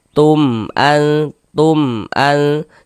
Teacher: Maka berarti ini hukumnya adalah izhar syafawi. Karena dia izhar, maka dibaca jelas, tidak berdengung. Baca pendek saja. · Karena dia izhar maka dibaca jelas, tidak berdengung, baca pendek saja. Tum an, jangan dibaca tum dipanjangkan begitu, jangan salah, baca pendek saja.